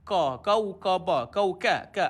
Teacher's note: huruf Kaf sifat dia Hamas angin dikeluarkan